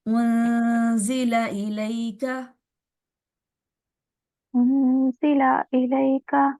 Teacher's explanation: उनजिला नहीं करना, लाम को लंबा नहीं होने देना